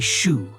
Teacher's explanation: you will hear the sh sound instead of the y sound. They say shu instead of yo.